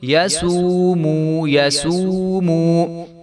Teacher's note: دونوں واو مدہ ہیں تو ان کو ایک ایک الف کے برابر ہم لمبا کریں گے